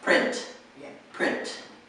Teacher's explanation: you have to have the T sound yes but you don't necessarily want it to be two syllables